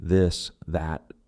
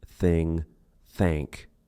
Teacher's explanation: the TH sound can be voiced with vocal cord vibration, e.g. this, that, or unvoiced, no vibration, e.g. thing, thank, depending on its function in a word.